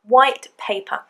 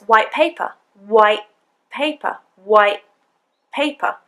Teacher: when we have a T followed by a P, the T often is assimilated, so it becomes a P sound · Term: assimilation